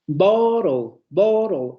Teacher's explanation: Bottle, bottle, en donde ese sonido final vamos a tener un ataque que va a ser la dental, en este caso la alveolar, y luego el núcleo silábico que va a recaer en la lateral líquida